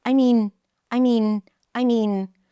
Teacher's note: Flat, I mean, pitch is up, stays up in the air because something else is coming up.